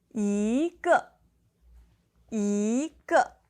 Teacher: the second and the fourth tone together yīgè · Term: tone change